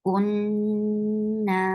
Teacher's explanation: you will stretch it two counts long too, because this is a long vowel